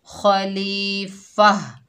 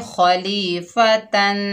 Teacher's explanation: वक़्फ़ होगा वक़्फ़ बिल इब्दाल, गोल ता हा में बदल जाएगी